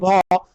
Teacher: ভ আমরা দেখো জোরে উচ্চারণ করতে হচ্ছে ভ, সেক্ষেত্রে মহাপ্রাণ বর্ণ।